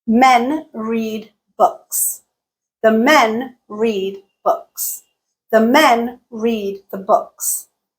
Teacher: the books we went from three syllables to eight syllables but the length of the utterance was about the same that is because the words that were stressed in all of those sentences were the same the same three words were stressed and